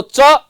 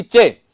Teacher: तो च बोलिएगा, न कि चे। च में जितना समय लगता है उससे दुगुना समय लगता है चे में, क्योंकि च में अ स्वर मिला है।